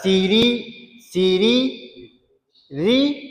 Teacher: Sebab ra baris kasrah. Ra baris kasrah, kita baca nipis. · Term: tarqiqkan ra